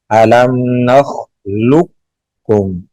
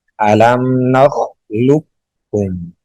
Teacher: یہاں پہ بھی ادغام کریں گے علم نخلقکم، لوکو کم قلقلہ ہو رہا ہے، یہاں پہ قلقلہ نہیں کریں گے، مکمل طور پر داخل کر دیں گے